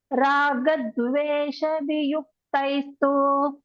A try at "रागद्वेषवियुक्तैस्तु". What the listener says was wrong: don't drag the two, it is half. Vesha, once more.